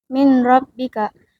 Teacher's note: Nun mati dilebur tanpa gunah karena bertemu huruf ro. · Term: Idgham bila gunah